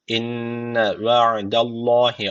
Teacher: Allah lafzı kalın okunacak çünkü öncesine karşı üstten bağlanıyor